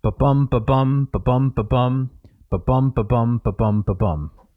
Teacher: Iambic tetrameters. So an iamb is one short syllable, bum, followed by a long syllable, bum.